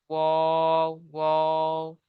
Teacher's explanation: দুই ঠোঁট না মিলিয়ে মাঝখান থেকে উচ্চারিত হয় ওয়াও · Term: 14 নম্বর মাখরাজ